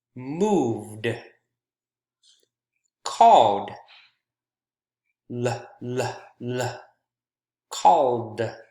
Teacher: All of these end in a voiced consonant sound, and for that reason, these words, the ED is pronounced as D consonant sound